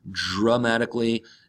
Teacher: Dramatically is an adverb. Remember the D and the R together in English or American English sound more like a J and an R.